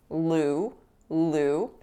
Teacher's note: it's not a pure vowel it's moving